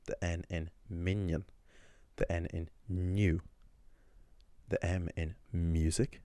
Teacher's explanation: So, when you make a slender consonant sound in Irish, what you're basically doing is slightly changing the position of where the tongue lies, right? And adding a little y sound to it.